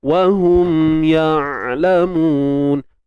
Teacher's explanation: kita sebut ain ni, kita rasa macam ada satu benda yang menyempit, menghimpit ke belakang dinding kerongkong kita ni